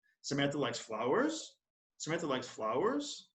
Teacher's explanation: using rising intonation it would sound like this